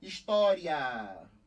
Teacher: aqui é história você tem aqui mostra os olhos um ditongo o i é mais fraco semivogal e o a mais forte vogal e tá na mesma sílaba ditongo crescente oral